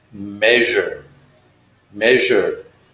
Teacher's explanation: This consonant is more like a ZH. You use your voice.